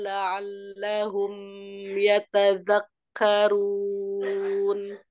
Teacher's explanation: mimnya terlalu ditahan ya, Izhar Syafawi